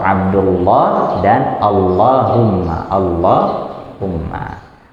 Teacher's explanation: cara bacanya pun juga dengan lam ditebalkan bukan diganti menjadi wow